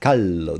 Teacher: when you have two consonants, you go from the C, from the C to the L, and the A is very short just to move from one to the other